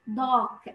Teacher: نطقه بال British dark لأن الصوت ما فيهوش R. هو طويل dark. في الأمريكان هتبقى dark.